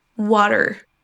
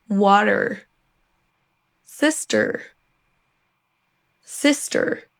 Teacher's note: Si vous préférez l'accent US, là vous allez entendre une sorte de R roulé à la fin.